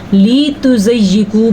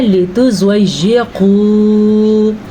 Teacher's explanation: زواد کو پر کرنا ہے کیونکہ زواد حروف مستعلیہ میں سے ہے. یا پہ شد ہے، شد کو ادا کرنا لیکن لمبا نہیں کرنا. اکثر لوگ پڑھتے ہیں لام کو بھی لمبا کر لیتے ہیں، لِتُزَيِّقُوا پڑھ لیتے ہیں.